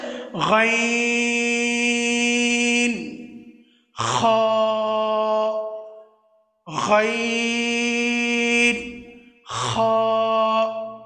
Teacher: কণ্ঠনালীর উপরিভাগ থেকে যেগুলো উচ্চারিত হয় ওইগুলো হচ্ছে গাইন, খ, গাইন, খ। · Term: হরফে হালাকিয়া